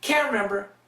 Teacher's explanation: So here we got can't and cancels the T.